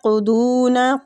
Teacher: قاف اور ضاد دونوں مستعلیہ حروف ہیں، پر پڑھنے ہیں